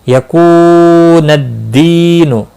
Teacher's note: واو مدہ ہے، دی یا مدہ ہے، ایک ایک الف کے برابر کھینچ کر پڑھیں گے